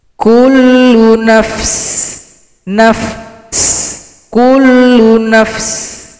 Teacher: Kalau berhenti, sin disukunkan, berikan bunyi nafas.